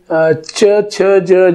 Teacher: अग्र टाळूला जिभेचं टोक लावून काही स्वनांची निर्मिती होत असते.